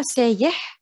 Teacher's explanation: it comes from the standard sayih with the glottal stop, what we commonly will swap it to the ya,